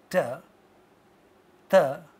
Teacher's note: The tip of the tongue hits teeth when we say ta, ta, and therefore this sound is called dental sound.